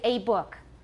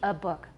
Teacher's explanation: So you need to start paying attention to function words in English very often. Probably most of the time we need a schwa and not a full vowel. · But it should be a book. Short, and it's a schwa.